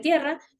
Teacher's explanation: se producen cuando la lengua toca los alveolos la zona justo detrás de los dientes superiores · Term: alveolares, Alveolares